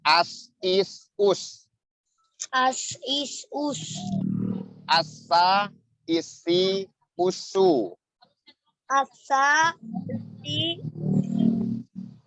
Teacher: Suara itu keluarnya terdengar seperti suitan burung. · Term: sofir